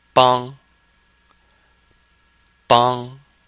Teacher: it sounds just like Wong but with a B bong now Wong is second tone but this bong is first tone